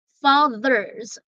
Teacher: the TH there is hard and the S there is pronounced as Z.